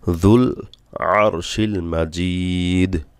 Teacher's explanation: যুল আরশিল, আইন গলা থেকে যুল, জিব্বার আগা দিয়ে, যুল না যুল, যুল জিব্বার আগা, সামনের উপরের দাঁতে 2 দাঁতের আগার সাথে লাগবে।